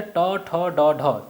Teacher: मूर्धा जबान का जो ऊपरी हिस्सा है, तालु, जहाँ पर जिह्वा को हम टेढ़ा करके बोलते हैं